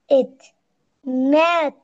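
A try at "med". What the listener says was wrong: তো এড হবে, তুমি মেড কেন ম্যাট বলতেছো কেন? ম এড মেড।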